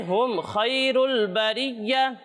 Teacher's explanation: یہاں پر ہم میم میں غنہ نہیں کریں گے کیونکہ یہاں پر اظہار شفوی ہو رہا ہے اور اظہار شفوی میں ہم غنہ نہیں کرتے تو یہاں پر غنہ نہیں کرنا.